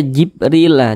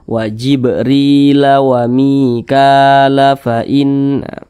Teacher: Maka huruf ba ini dibaca mantul, wajib mantul seperti itu. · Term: huruf qalqalah